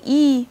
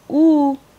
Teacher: the narrowness is in the back cavity of the mouth so whereas these are both High vowels one is a front vowel one is a back vowel additionally we have the property of roundedness this is unrounded this · So the tongue height, for instance, like in a vowel like E, the high, it's a high vowel, whereas in a vowel like U, which is also a high vowel, the narrowness is in the back cavity of the mouth. So whereas these are both high vowels, one is a front vowel, one is a back vowel